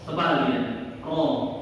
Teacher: Kalau roh tebal itu poinnya yang pertama ketika dia berharokat fathah. Kalau roh itu berharokat fathah maka dia tebal, otomatis tebal.